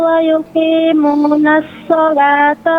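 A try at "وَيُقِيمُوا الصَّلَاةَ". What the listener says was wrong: Mohon maaf, Umu. Wa yuqimus shalah, nggak ada nunnya.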